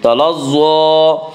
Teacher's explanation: ضوا کے اوپر کھڑا زبر ہے، کھڑا زبر کو ایک الف کے برابر کھینچ کر پڑھیں گے